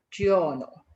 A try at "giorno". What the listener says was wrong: With even less E inside. So it's not giorno, giorno, it's giorno. Can you hear the difference? Like, really straightforward. Giorno.